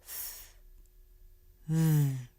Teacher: The very tip of the tongue comes through the teeth. The air passes around the tongue. The tongue is relaxed.